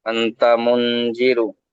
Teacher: নুন সাকিনের পরে হুরফে ইকফার একটি অক্ষর এসেছে, হুম। তাই একে নাকে তুলে এক আলিফ পরিমাণ গুণনা করে পড়ি